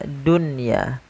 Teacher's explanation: Ya, maka apabila ada nun sukun terdapat dalam satu kata, maka ia tidak dibaca dengan bacaan idgham. Akan tapi kita membaca dengan bacaan izhar mutlak, yaitu suara nunnya harus dibaca dengan jelas.